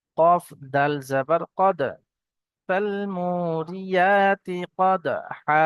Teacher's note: হরফে কলকলা 5টি অক্ষরের মধ্যে থেকে এখানে দাল এসছে, একটু ঝাটকার সঙ্গে কলকলা করে পড়তে হবে।